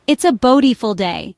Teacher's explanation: they emphasize the word beautiful, stretching it out slightly and raising their pitch. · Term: stress and intonation